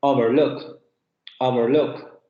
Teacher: Aquí lo vemos en la diferencia entre overlook y overlook, que en un caso tendríamos el sustantivo, cuando tenemos el acento en la primera sílaba, overlook. Y luego sería un verbo cuando tenemos el acento en la última sílaba